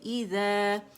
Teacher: مد اصلی ہے، مد طبیعی، آواز 2 کاؤنٹ کے لیے اوپر جائے گی